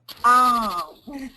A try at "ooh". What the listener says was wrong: So, the OH, So the OH, we say O, and the OOH, we say ooh. Okay, so this is that, ooh, I love that place.